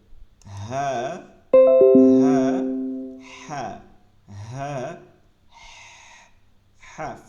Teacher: ফিস ফিস আওয়াজে এই হাটা বলতে হবে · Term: লম্বা হা